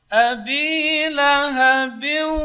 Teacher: Bersama dengan dengung. Jadi dengung bunyinya itu di khayshum. Jadi biu masuk di khayshum, di rongga hidung. Abi lahabiu, bindeng suaranya. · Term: idgham bi gunnah